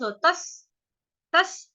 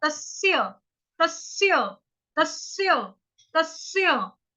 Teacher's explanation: अभी तस्य जो है वो सान आपके लिए बोलना, तस्य तस्य, पहले त बोला, पहले त के साथ जोड़ देंगे आधा स, तस तस। उसके बाद बोलेंगे स्य, स्याही वाला, तस्य तस्य तस्य तस्य।